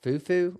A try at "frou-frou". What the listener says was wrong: Frou-frou. Yeah, with an R.